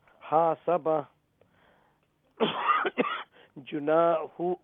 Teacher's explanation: You make the ha long, because followed by the alif mad, and you make the noon long, because it's before the alif mad.